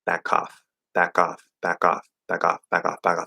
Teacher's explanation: it's going to be a weak K. You don't want to push it out as much.